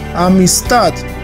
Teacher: el acento que está en la última sílaba